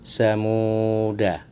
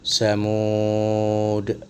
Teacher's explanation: Tanda sifir mustadir ini adalah bulat sempurna. Cara membacanya baik di wasol maupun di waqaf dibaca pendek. Bahkan ketika di waqaf dibaca sebagai sukun.